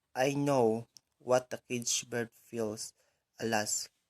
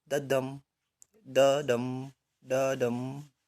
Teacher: So in so the Sympathy by Paul Laurence Dunbar is written in iambic tetrameter. So iambic tetrameter again is following the rhythm of unstressed syllable followed by stressed syllable